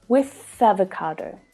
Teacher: the TH sound can link to the following vowel sound.